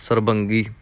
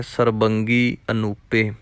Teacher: ਜਦੋਂ ਆਪਾਂ ਧਿਆਨ ਨਾਲ ਉਚਾਰਨ ਨਹੀਂ ਕਰਦੇ ਤਾਂ ਇਹ ਬੱਬੇ ਦੀ ਜਗ੍ਹਾ 'ਤੇ ਭੱਬਾ ਬੋਲਿਆ ਜਾਂਦਾ ਹੈ, ਸਰਬੰਗੀ। ਇਸ ਲਈ ਇਸ ਨੂੰ ਪੋਲਾ ਕਰਨਾ ਹੈ, ਸਰਬੰਗੀ ਅਨੂਪੇ।